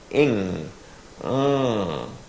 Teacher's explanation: when you vocalize through the NG sound the sound is actually coming out of your nose because the tongue is in the back of your mouth raised against the upper part and that redirects the air out your nose now if you